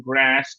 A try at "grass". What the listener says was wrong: গ্রাস গ্রাস কেন, তালব্য কেন? গ্রাস গ্রাস আরে গ্রাস না তো, দন্তস্বর কি? গ্রাস বলছেন কেন? গ্রাস মানে ইউকে তে, ইউএসএ হচ্ছে গ্রাস।